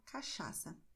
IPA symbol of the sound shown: ʃ